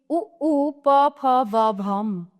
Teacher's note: ओष्ट यानी दोनों होठों से